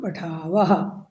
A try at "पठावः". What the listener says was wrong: नहीं नहीं, पठावः विसर्ग रहेगा, आवाम पठावः।